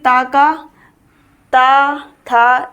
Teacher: वैसे ही ता का ता था यानी कि दांत जीभ दांतों को टच करती है तो इसका उच्चारण स्थान त वर्ग का क्या होगा दंतव्य